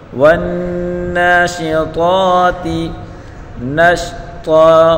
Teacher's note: طا کو ایک الف کی مقدار کھینچ کر پڑھیں گے · نون کو شین کے ساتھ ملا کر پڑھیں گے اور طا کو پر پڑھیں گے